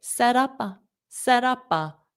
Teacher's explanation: So notice that ah is also going to join and it's going to sound like set up. So when my mouth closes for that P with the set up, then I will open my mouth and I will say pa. So I'll pronounce the P and A together.